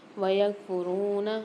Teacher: را کے ساتھ واو ساکن ہے، را کو ایک الف کی مقدار کھینچیں گے